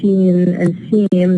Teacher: they are nasalized in a certain context when they are followed by a nasal consonant. طبعا here if you look at seen and seem, the na and the ma are nasals.